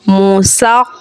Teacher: खा हुरूफ़े मुस्तअलिया का हर्फ है, पुर यानी मोटा पढ़ेंगे